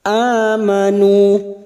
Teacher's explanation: hamzah yang berharokat alif kecil di atas atau fathah berdiri ini namanya mad badal, cabang dari mad tabi'i, 2 harokat kita panjangkan